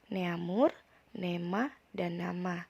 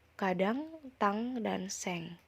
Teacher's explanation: en sebagai nasal dan eng sebagai nasal dorsovelar